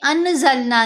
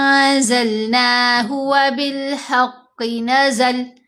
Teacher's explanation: اب ہم نے انزلنا نہیں پڑھنا، نون کی آواز کو ایسے پڑھیں گے کہ بہت واضح، بہت کلیئر نون کی آواز سنائی نہ دے، ناک میں چھپی ہوئی ہوگی، ساتھ غنہ ہوتا کریں گے، غنہ خفیف یہ ہوتا ہے، انزلناہ وبالحق نزل۔ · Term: احفا